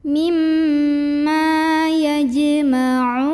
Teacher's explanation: Karena ada mad tabi'i, ini mad tabi'inya waw sukun sebelumnya dhammah, ketemu sama huruf yang disukunkan yaitu huruf nun. Maka dibaca panjang ainnya 2, 4 atau 6 harokat asal konsisten dalam sekali bacaan. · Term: mad arid li sukun